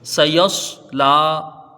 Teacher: ٹھیک ہے، دیکھیے یہاں سے سین کو جلدی پڑھا جائے گا، یا کو سواد سے ملا کے یہاں اس کو بھی جلدی پڑھیں گے، لام کے اوپر کھڑا زبر ہے، 1 الف کے برابر اس کو کھینچ کے پڑھیں گے، الف مدہ کے یہ برابر ہے۔ خیال رہے سین باریک حرف ہے اور سواد یہ پر حرف ہے